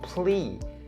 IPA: ˈpliː